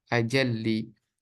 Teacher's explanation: lam yang tadi sukun itu dimasukkan ke dalam lam yang kedua sehingga menjadi idgham